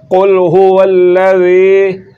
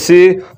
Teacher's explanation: کرنا ہے اپ نے ذال پڑھنا ہے ذا نہیں پڑھنا تو ذال کو بغیر سیٹی کے پڑھا جاتا ہے